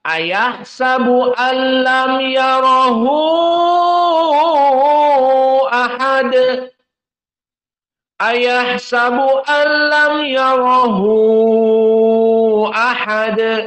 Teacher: qiraah yang kedua dengan mad alisba dikenyangkan madnya sampai akhir